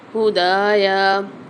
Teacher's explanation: دال کے ساتھ الف مد آ رہی ہے، ایک الف مدار دال کو کھینچ کے پڑھیں گے